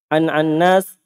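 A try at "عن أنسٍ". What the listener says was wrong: tasdid nunnya, antum tasdid nunnya. Annas, antum tahu antum baca gimana? Oh, berarti yang dia pahami sukunnya an. Itu antum baca namanya itu. Namanya. Setelah an. Annas. Berarti seperti annas ya, manusia.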